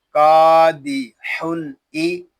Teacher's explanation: यहाँ तनवीन में इजहार होगा, इसको इजहार हल्की भी कहते हैं क्योंकि हमजा हरुफे हल्की में से है। हमजा ज़ेर ई, कादिहुन ई।